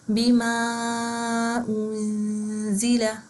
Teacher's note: انزل میں نون ساکن کے بعد زا آ رہا ہے تو ہم یہاں پہ نون کی آواز کو چھپا کے پڑھیں گے